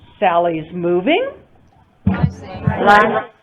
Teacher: i'm asking a question even though it's not in the form of a question grammatically but because of my intonation because i'm using rising intonation i'm asking a question